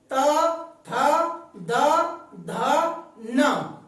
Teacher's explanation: हमारी जीभ दांतों से स्पर्श कर रही है। त, थ, द, ध, न, इन्हें कहेंगे हम दंतव्य।